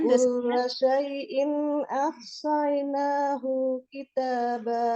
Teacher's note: jadi hu-nya jangan dipanjangkan ya